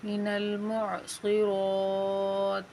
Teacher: صاد اور را کو موٹا یعنی پر کر کے پڑھیں گے